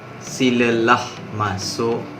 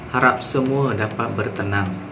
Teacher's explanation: Jadi intonasi rendah ni dia lebih kepada lemah lembut lah.